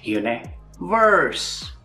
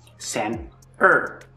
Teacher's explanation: Universe has the strong R sound and center has the weak R sound. Both of these sound R, but once again, the weak R is quicker, shorter, smoother, and the strong R is longer, deeper, and darker.